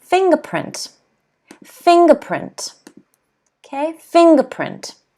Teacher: So if you have a look over here, the apostrophe is here, so the stress is on fing.